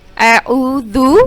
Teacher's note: دال کی آواز نرمی سے، اس میں سیٹی کی آواز نہیں آئے گی